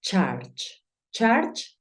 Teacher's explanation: Claro está que yo estoy haciendo el sonido de la u como una a Pero recuerda que es la intención es como si dijeses una · es como si dijeses una a pero terminas diciendo una o